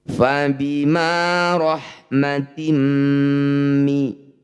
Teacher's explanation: Bunyi kasrah tanwinnya masukkan pada mim, dengungkan 2 harokat. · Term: idgham bi gunnah